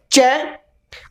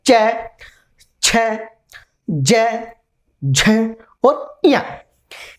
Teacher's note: जिसे बोल के देखते हैं। च, अपनी जो जिह्वा है वह उठ करके तालु के ऊपर वाले भाग को छूती है।